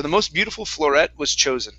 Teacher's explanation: we're gonna say floret here and stress that ending